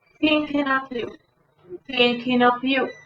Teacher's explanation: Esa TH, lengua entre los dientes